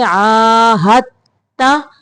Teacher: अल्लज़ीना आहदता, हद नहीं पढ़ेंगे, दाल को नहीं पढ़ना, हा को ता के अंदर मिलाएंगे।